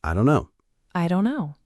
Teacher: That often gets shortened to I don't know. The t sound disappears.